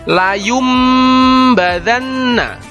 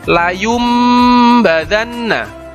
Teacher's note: dengan mengganti bunyi huruf nun sukun atau tanwin dengan bunyi huruf mim sukun disertai mendengung nun sukun atau tanwin nya diganti menjadi Bunyi huruf mim sukun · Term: iqlab